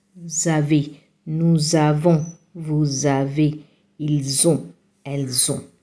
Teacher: we add the S in the nous, vous and elle to the A or the O in the verb, and it becomes like you add the sound zon